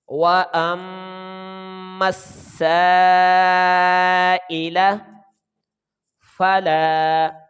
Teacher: کیونکہ سین شمسی حرف ہے، اس کا لام تعریف نہیں پڑھا جائے گا. یہ میم کے اوپر جو زبر ہے وہ ہم سین کے ساتھ ملا کر ادا کریں گے.